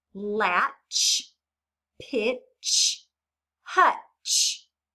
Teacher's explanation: Is the ch sound continuing or stopped? It's stopped, isn't it? We can't just continue it as a long sound, can we?